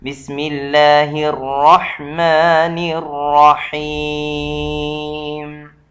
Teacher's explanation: ح اس کا اپنا آواز حلق سے ہونا چاہیے